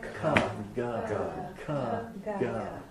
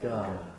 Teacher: Same place in the throat, but one is hard, ka. And one is soft, ga.